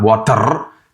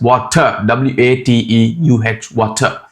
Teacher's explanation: just replace the R sound with a UH sound